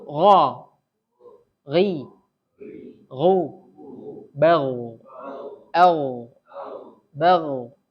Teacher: Tebal ya. Ghain ini memiliki sifat isti'la, dibaca tebal.